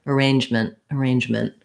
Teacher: we have an unstressed syllable so letter a says the schwa sound sounds like uh and then our stress is on the range syllable · with m-e-n-t ending that we almost have no vowel there so i'm really short and light on that unstressed mint ending i go right from the m to the n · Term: unstressed ment ending